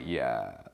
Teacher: they almost have like a vocal fry going on